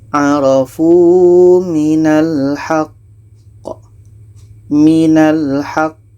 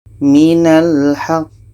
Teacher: Jadi di sini ada qamati diiringi dengan tasydid. Nah, ini qalqalah akbar. Cara bacanya kita berhenti 2 detik, setelah itu kita pantulkan.